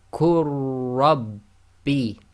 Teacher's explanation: Joining the qaf directly to the ra, the lam is completely ignored.